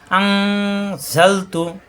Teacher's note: আন নুন সাকিনের পরে ঝা ইকফা গুন্না দেওয়া আছে, আন পড়তে হবে আং অনেক সজরে